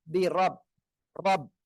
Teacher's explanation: রর উপরে জবর রয়েছে মোটা আওয়াজে পড়তে হবে